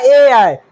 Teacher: जैसे कि ए आई हमको बोलना हुआ तो कौन कौन अंग यूज हुआ है, कंठ और तालु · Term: कंठ तालु